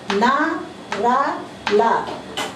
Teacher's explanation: जीभ ऊपरी मसूड़ों को छूती है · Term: वर्तस्य व्यंजन